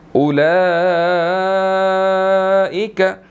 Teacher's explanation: اس کے اوپر بڑی مد ہے اور کھڑی زبر بھی ہے، اس کو 4 to 5 سیکنڈز ہم نے لمبا کر کے پڑھنا ہے